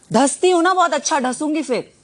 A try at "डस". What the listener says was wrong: धस नहीं होता, डस होता है.